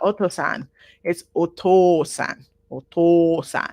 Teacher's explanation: you see this o u this counts as a double O it means the uh o sound is elongated · is elongated okay so it's not Osan it's Osan or toan twice the length of a regular o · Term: double vowel